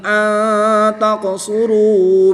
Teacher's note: نون ساکن کے بعد تا حروف اخفا میں سے ہے تو یہاں پر اخفا ہوگا یعنی غنہ زمانی کر کے پڑھیں گے